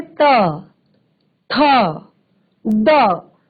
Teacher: इनका उच्चारण होता है दंत से